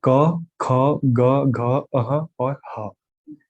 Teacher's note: ये इनका उच्चारण सीधा गले से किया जाता है बिना किसी रुकावट के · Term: क वर्ग